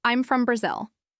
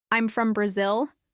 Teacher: If I let my voice fall on the word Brazil, the listener understands that I'm done. I've made a statement. There's no question in the air. · But if I use a rising intonation, I'm from Brazil, it sounds like I'm unsure. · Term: falling intonation